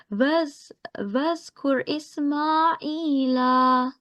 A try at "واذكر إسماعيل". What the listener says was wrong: It was much better, but make sure this is 2 seconds. Ismail.